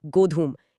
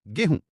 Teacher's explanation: बिल्कुल, गोधूम में जो ध था वो बोलते बोलते ह बन गया और जो म की ध्वनि थी वो नाक से होते हुए चंद्रबिंदु में बदल गई। गोधूम से गोहूम और फिर बन गया गेहूं।